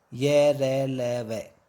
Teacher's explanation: अंतस्थ का अर्थ है स्वर और व्यंजन के बीच में स्थित। इनका उच्चारण जीभ, तालु, दांत और होठों के निकट आने से होता है, किंतु श्वास में रुकावट कम होती है। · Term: अंतस्थ व्यंजन